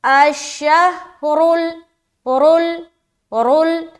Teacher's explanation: را کو موٹا رکھنا ہے، یعنی کہ اسے بولڈ پڑھنا ہے، منہ کو گول کرتے ہوئے پڑھنا ہے